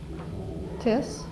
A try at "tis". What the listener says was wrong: Not tis, because we don't learn S having the Z sound yet.